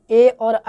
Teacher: ए और आय का उच्चारण स्थान जो है आपका कंठ और तालु दोनों के मेल से बनता है